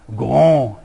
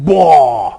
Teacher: They involve a vowel which involves a big vocal tract.